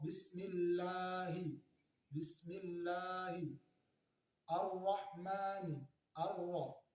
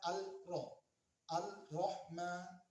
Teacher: Alif lam syamsiyah ini adalah kita membacanya langsung melebur ke huruf selanjutnya tanpa dibaca lam matinya. Contoh, bismillahi, bismillahi, ar-rahmani, ar-ra, yaitu ada alif lam, kemudian di situ ada ro, tapi alif lamnya tidak kelihatan saat dibaca.